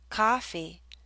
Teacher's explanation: if you hear a coffee the lips are more relaxed and the tongue may be more forward